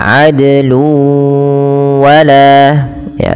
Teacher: tanwinnya wajib dimasukkan ke huruf waw, seakan-akan nanti wawnya ada huruf tasydidnya. Maka adlu wala ya, sambil ditahan dua harakat. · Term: idgham bi gunnah